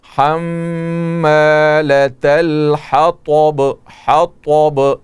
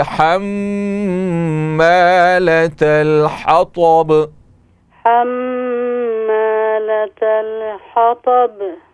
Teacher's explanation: تو طا میں صفت جو ہے استعلا جو ہے اس کو مستعلیہ کہتے ہیں طا کو، تو اس کو آپ یعنی زبان کو تالو کی طرف اٹھا کر طا کو منہ بھر کر کے آپ پڑھیں تاکہ تا طا سے الگ نظر آئے